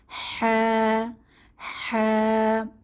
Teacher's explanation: জিম পরবর্তী হরফ হা এটা কণ্ঠনালী বা হল থেকে আসবে তাহলে কণ্ঠনালীর মধ্যভাগ থেকে বাতাসকে চেপে হা উচ্চারিত হয়